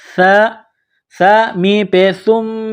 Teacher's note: سا کو نرم کرنا ہے، زبان کا سرہ تھوڑا سا باہر نکالیں گے